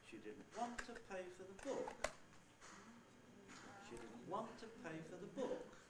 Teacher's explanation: the last accented syllable this time is book that's the nucleus